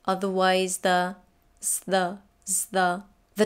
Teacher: the tongue comes in position for the th between the teeth but you don't put it there it stays behind the teeth and just slightly touches them it gives the tongue the opportunity to transition between the sounds